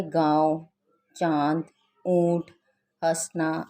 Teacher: आगे अनुस्वार, इनका उच्चारण नाक से होता है, जैसे चंचल, कंगन, जंगल, दंगल आदि। अनुनासिक, इनका उच्चारण नाक और गले दोनों से होता है